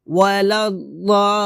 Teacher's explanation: এখানে আমরা 4 আলিফ টান দিয়ে লামকে ধরবো, ওয়ালাদ-দাল্লিন, লিনে গিয়ে আবার 3 আলিফ টান দিব।